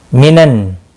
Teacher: नून मुशद्दद पर गुन्ना होगा।